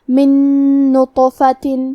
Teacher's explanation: ادغام کا معنی ہے حرف کو حرف میں داخل کرنا، تو ہم نون ساکن کو دوسرے نون میں ملا کے ایک ہی نون غنہ اور تشدید کے ساتھ پڑھیں گے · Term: ادغام بغنہ